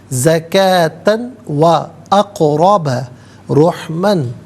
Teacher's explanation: زکاتن میں تا پر 2 زبر کی تنوین ہے، اسے واو کے ساتھ ملائیں گے، واو کی آواز کو ادا کیا جائے گا